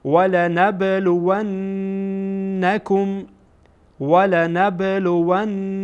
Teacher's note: این واو با نون وصل میشه و نون در اینجا میبینیم مشدده و غنه میشه.